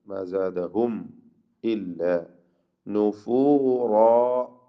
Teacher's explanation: റാഇനും അലിഫിനും തഫ്ഖീം കൊടുക്കുക